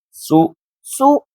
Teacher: تو لو سو، سولو، سو، سین پیش، سین پیش، سو، سو، سین کی آواز پہلے ادا کریں گے، سین کی آواز کو کلیئر، پھر ہونٹ گول کریں گے